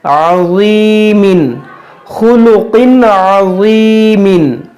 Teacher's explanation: تنوین کے بعد عین حرف حلقی ہے اس لیے یہاں پر اظہار کا قاعدہ لگے گا یا بغیر گنہ کے, گنہ نہیں کریں گے.